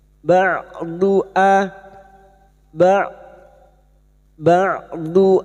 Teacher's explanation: huruf ain yang memiliki sifat jahr dan tawasut yaitu tertahannya nafas dan antara tertahannya suara dan mengalirnya suara ba' jangan samakan dengan hamzah ba'du A ba' ba'du ayatibik.